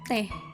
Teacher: vokal E dalam kata teh, mulut sedikit terbuka, lidah berada pada posisi tengah.